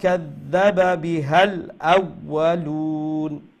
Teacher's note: এখানে হা লম্বা হবে না